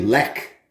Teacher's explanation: The CH, you would think would be like a sh sound, like in Chevy, but when it comes to Polish beer, it's silent. Instead, it's a hard K.